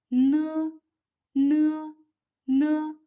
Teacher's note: The tongue tip is pressed against the upper alveolar ridge. The soft palate and uvula are lowered, and the air is let out through the nasal cavity with the vibrations of the vocal cords. It sounds like n of no, no, n, no, n. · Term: alveolar nasal